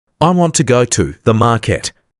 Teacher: We don't stress every word, we stress want, go, and market. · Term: word stress and rhythm